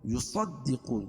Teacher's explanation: صاد کو موٹا پڑھیں گے